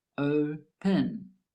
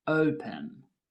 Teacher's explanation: The verb open has two syllables, open. The first syllable is stressed, open. The last syllable, pen, is not stressed, so we just add ed to the end.